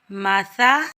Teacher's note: میم کے اوپر زبر بغیر کھینچے پڑھیں گے، سا کے اوپر زبر بغیر کھینچے پڑھیں گے، سا کو نرمی سے ادا کریں گے